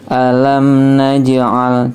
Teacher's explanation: mim sukun bertemu nun itu idhar ya, idhar safawi namanya ya. Dibaca jelas. Alam naj'al, ja-nya atau jimnya ini dipantulkan ya, karena dia sukun.